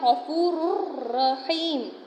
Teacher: غفورن، یعنی تنوین کے بعد کیا ہے؟ را ہے، را آیا ہے تو وہاں پر غنہ نہیں کریں گے، ادغام تو کریں گے